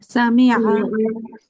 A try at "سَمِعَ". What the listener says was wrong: সামিআ শেষের আইনটা প্রকাশ পাবে সামিআ সামিআ সামিআ বলেন তো